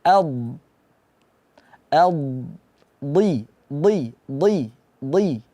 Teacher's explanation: makhrajnya itu ada di sisi lidah bertemu dengan geraham atas do dan hurufnya itu tidak ada angin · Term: huruf DD Dod